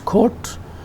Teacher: In General American, it is pronounced as court, although the GA vowel is somewhat shorter than the RP vowel.